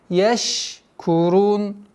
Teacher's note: Шин со свойством тафаши, который удержание ш.